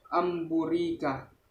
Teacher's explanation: Cara membacanya dengan suara nun atau in an menjadi suara mim dengan merapatkan dua bibir serta mendengung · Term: iklab